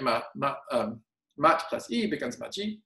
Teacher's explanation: alveolar stops alternate to some kind of palatal, right, before E and Y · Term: Korean palatalization